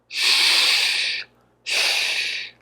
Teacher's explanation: You'll also notice my lips are pursing into a little hole. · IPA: ʃ